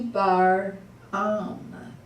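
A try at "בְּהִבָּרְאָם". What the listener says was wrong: Bet He Baram. You can't say Baram because there's a silent shva there. So it's Bet He Bar Am. You see the difference? Bet He Bar Am.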